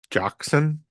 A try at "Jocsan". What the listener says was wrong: Hoxton. Yeah, Hoxton. H for the J. Hoxton.